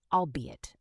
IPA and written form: ɔːlˈbiː.ɪt (albeit)